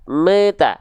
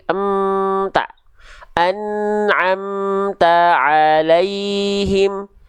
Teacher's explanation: nggak boleh ada bunyi vokal e di ujung, tidak boleh. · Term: mim sukun